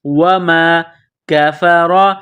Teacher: علی ملک سلیمان وما کفر، واو کو پڑھتے وقت ہونٹوں کو گول کرنا ہے، واو، واو زبر وا، میم الف زبر ما، وما کفر، کاف کو باریک کرنا ہے، را کے اوپر زبر ہے، را کو موٹا کرنا ہے